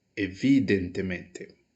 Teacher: eu tenho o vi como sílaba mais forte. Ela tá para cá da terceira sílaba, ok? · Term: sobresdrújula